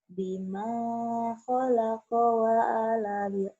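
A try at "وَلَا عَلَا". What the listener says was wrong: Wala'ala. Bukan wa'ala. Itu mah bukan alif.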